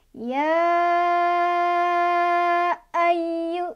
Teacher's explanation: Cara bacanya dipanjangkan. Boleh 4, boleh 5. Ya, 4. Ya, ayu gitu ya. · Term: Jaiz Munfashil